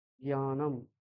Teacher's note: আমরা জ্ঞান বলি তো, অ্যাকচুয়ালি ওটা আমরা গয় দফলা আকার উচ্চারণ করি, কিন্তু ওটা বাংলার উচ্চারণ। সংস্কৃতে কিন্তু জ্ঞানম, এখানে দুটো অক্ষর হালকা ভাবে প্রকাশ পাবে, একটা জ আর একটা ঞ।